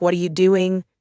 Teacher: For w questions like what are you doing? The intonation usually falls.